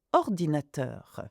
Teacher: I stress the last syllable of words, which happens in French.